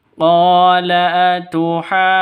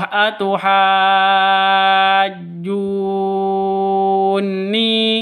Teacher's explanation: Nun tasydid itu gunnah musyaddadah. Jadi harus didengungkan. Jangan langsung atuhajjuni.